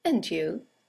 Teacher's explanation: And you is a statement. It has a falling intonation